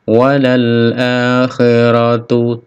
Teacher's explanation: KH khi ada serak di sini